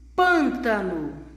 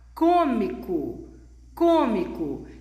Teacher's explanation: a boca não se abre como no acento agudo